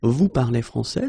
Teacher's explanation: many French people and many French-speaking people just keep the same order and raise their voice at the end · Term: raise the voice